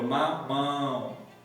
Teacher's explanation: O nariz já treme na vogal. Então não sai livre pela boca. Então aqui eu tenho um ditongo nasal.